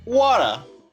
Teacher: you have to take a pause in the middle of the word, as if you're about to say the letter in the middle, but you're not saying it. So you say war and then What? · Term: the glottal